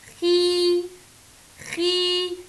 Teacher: الخاء لوحدها تحتها كسرة تبقى حركة قصيرة، لكن بعديها مد بالياء